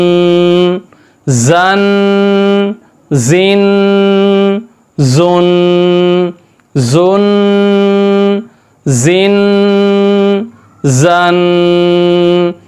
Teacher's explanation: ज़ा बारीक है और नरम नहीं है, सीटी के साथ है ये। · जो शहद की मक्खी की आवाज़ होती है उसी आवाज़ के साथ इस ज़ा को पढ़ा जाता है।